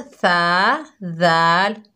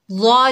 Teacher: सा, ज़ाल, ज़ा नरमी वाले हरूफ हैं, लेकिन हम इसमें फ़र्क देखेंगे कि इसमें फ़र्क क्या है। देखिए, सा और ज़ाल जो हैं बारीक हरूफ हैं, ज़ा जो है पुर हरूफ है।